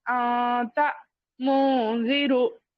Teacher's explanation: زبان کیا ہے، نون کے مخرج کو ٹچ نہیں ہونا، اور تھوڑا غنہ کرتے ہوئے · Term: اخفا